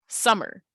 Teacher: The sum, first part of summer, is definitely a stress syllable.